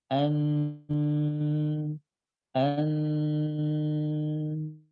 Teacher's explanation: Nah ini ada bunyi en yang mengalir. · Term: huruf nun